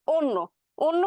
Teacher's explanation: হুম আর তারপরের ধ্বনিতে যদি একটা জ ফলা থাকে সেই ক্ষেত্রে ওই যে শুরুর অ যুক্ত ধ্বনিটা সেটার উচ্চারণ হয় হচ্ছে ও এর মত